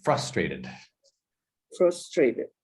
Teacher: the intonation is the accent on the first syllable